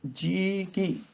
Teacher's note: ਇਹਨੂੰ ਜੀਆ ਨਹੀਂ ਪੜਨਾ ਜਾਂ ਜੀਆ ਨਹੀਂ ਪੜਨਾ, ਜੀ ਕੀ। ਜੱਜੇ ਦੀ ਪਿਆਰੀ ਦੀ ਆਵਾਜ਼ ਲਮਕ ਜਾਏਗੀ। ਜਦੋਂ ਆਖਰੀ ਅੱਖਰ ਐੜਾ ਮੁਕਤਾ ਹੋਵੇ ਤੇ ਉਸ ਤੋਂ ਪਹਿਲੀ ਲੱਗ ਦੀ ਆਵਾਜ਼ ਲਮਕ ਜਾਂਦੀ ਹੈ।